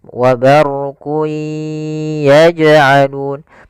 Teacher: Karena huruf idgham bi gunnah ada 4, yaitu ya, waw, mim, nun, yaitu yanmu. Maka cara membacanya, masukkan ke huruf ya dan ditahan. · di sini jim ada bacaan qalqalah, yaitu huruf jimnya memantul, maka dipantulkan huruf jimnya